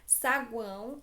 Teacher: Saguão é nasal, eu tenho a semivogal U, a vogal A e a semivogal O. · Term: tritongo